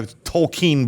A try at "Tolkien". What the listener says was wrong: Tolkien. Tolkien. No, you don't say it like Ian. It's pronounced Tolkien. E-I-N. Well, no, it's Tolkien if you really want to get specific about it.